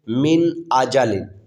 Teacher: حمزہ حروف ہلکی کا حرف ہے، تو اس لیے اس میں اظہار ہوگا، یعنی غنہ نہیں کریں گے، اس لیے اسے پڑھیں گے من آجالن، غنہ نہیں کریں گے۔